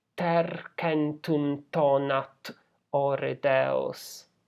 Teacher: Vergil is imitating that shouting by repeating this consonant sound t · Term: alliteration